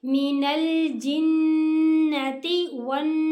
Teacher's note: नून के ऊपर मुशद्दद है, यहाँ पर गुन्ना होगा और उसके अलिफ मद्दा भी आ रही है, ऐसे एक अलिफ जितना लंबा भी करेंगे और सीन को हम साकिन पढ़ेंगे।